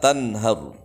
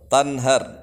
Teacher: nunnya harus jelas karena idhar. Kemudian ra di terakhir di situ dibaca tafkhim, tebal.